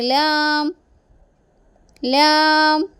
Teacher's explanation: നാവിന് അരികും മുൻപല്ലുകളുടെ ഊന്നും ഉപയോഗിച്ചു കൊണ്ടാണ് ലാം എന്ന അക്ഷരം പുറപ്പെടുവിക്കുന്നത്.